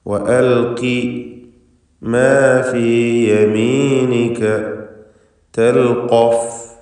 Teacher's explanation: വഅൽഖി മാ ഫീ യമീനിക തൽഖഫ്, ഇവിടെ ഖാഫിന് പൂർണ്ണമായ തഫ്ഖീം കൊടുക്കണം. ഖാഫ് ഫത്ഹാണ്.